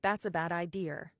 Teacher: So, in non-rhotic accents, accents where you drop the R at the ends of words, the R can still appear when the next word starts with a vowel. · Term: intrusive R